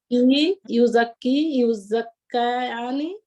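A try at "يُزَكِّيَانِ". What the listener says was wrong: Not kayani, no, not kayani, yuzakkiyani. Yu'allimani, right?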